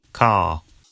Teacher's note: Father ends in a simple schwa vowel, like father. And in car, the vowel sound is lengthened in place of the R sound.